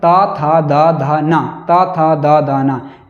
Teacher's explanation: तो ये त वर्ग जो है दांत को जो है पूरी तरह जीभ जो है स्पर्श कर रही है। जीभ जो है दांत को पूरी तरीके से स्पर्श कर रही है।